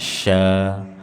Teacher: Sya tengah-tengah lidah, jangan dibaca mirip sin biasa. Sa, bukan sa, sya, tanpa dimonyongkan.